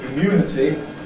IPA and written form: ɪˈmjuːnəti (immunity)